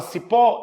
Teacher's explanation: Na palavra cipó, eu vou demorar mais tempo onde? No pó, oxítona terminada em O, tem acento.